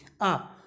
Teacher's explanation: जीभ जो हमारी होगी वो मुख के केंद्र में रहेगी, इसलिए मध्य स्वर या केंद्रीय स्वर इसे कहा जाता है